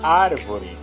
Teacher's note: Proparoxítona é a antepenúltima sílaba tônica, como a palavra árvore.